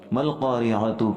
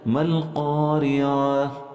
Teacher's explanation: لیکن جب ہم اس تا کے اوپر وقف کریں گے تو تا کو ساکن کر دیں گے، یعنی تا کی حرکت بھی اور تا کے نقطے بھی، ڈاٹ بھی ختم ہو جائیں گے، صرف نیچے والا ہا باقی رہ جائے گا اور اسی کی آواز آئے گی